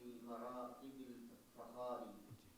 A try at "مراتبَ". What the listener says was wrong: مراتبی نہیں مراتبہ،